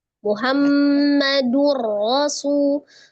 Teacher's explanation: Duro itu ada dhamma tanwin di huruf dal, tanwin ketemu ro ya. Tanwin bertemu dengan huruf ro, hukumnya adalah idgham bila gunnah. Idgham dilebur, ditasdidkan bila dengan tidak dengung gunnah ya, dengan tidak digonahkan. · Ro-nya fathah baca tebal atau tafkhim.